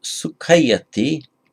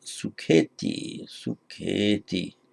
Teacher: And this is a common phonetic mutation between Sanskrit and Pali. The ayati ending becomes eti in Pali.